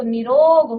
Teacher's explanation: विसर्ग का लोप हो जाता है और विसर्ग के पहले का जो स्वर है वो दीर्घ हो जाता है।